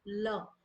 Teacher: जब हम बोलते हैं जिह्वा का जो अग्रभाग है वो हमारे तालू से टकराता है, ठीक है, तो उसे ही कहते हैं पार्श्विक व्यंजन।